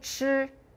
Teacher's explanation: Can you feel more air for 吃? That one's aspirated. Everything else is the same.